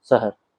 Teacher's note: तो शहर का स बोलते वक्त उसकी जीभ दांतों के ऊपर या दांतों के बीच में टकराएगी, जो कि गलत उच्चारण है। तो उसे सजग रहते हुए श का उच्चारण करना होगा, जिसमें उसे जीभ के बीच के भाग को ऊपर की ओर लगाना होगा, जिससे श यानी शहर बोल पाएंगे।